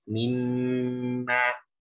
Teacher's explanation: gunnahnya itu adalah memang di sebagian para ahli tajwid mengatakan minimal 2 harokat